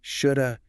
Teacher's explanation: The hard H is deleted, the V becomes lazy, and it merges into a single word.